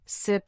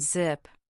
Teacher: For sip, the sound is unvoiced, just air. For zip, it is voiced with a buzz. Place your hand on your throat to feel the difference.